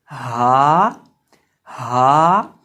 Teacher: हा हलक के आखिरी हिस्से से अदा होती है जो सीने के साथ मुत्तसिल है।